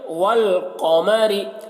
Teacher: قاف کو موٹا کر کے پڑھیں گے کیونکہ قاف حروف مستعلیہ میں سے۔